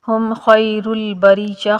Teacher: الا کا بھی وہی قاعدہ جو پیچھے آپ نے پڑھا ہے، ہم خیر البریہ، خا جو ہے یہ حرف لین ہے، یا ساکن سے پہلے والے حرف کے اوپر زبر آ جائے تو یہ یا لین ہوتا ہے، اس یا کو تھوڑا سا نرمی کے ساتھ بغیر کھینچے پڑھا جاتا ہے